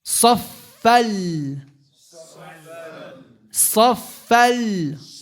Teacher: We have an idgham without a gunna.